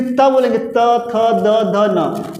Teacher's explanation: जब त थ द बोलेंगे जो आपकी जो जीभ है वो क्या करेगी, दंत को टच करती है